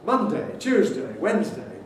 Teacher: in the names of the days of the week we can say monday tuesday wednesday with strong day